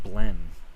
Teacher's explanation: I pronounced the word blend as just blen. So it's a very mild sound, I guess.